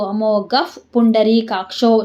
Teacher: ಗ ಮುಂದೆ ವಿಸರ್ಗ ಮತ್ತೆ ಪೂ ಇದೆ, ಅದಕ್ಕೆ ನಮ್ಗೇನಾಯ್ತು ವಿಸರ್ಗ ಅರ್ಧ ಫಾ ಆಯಿತು.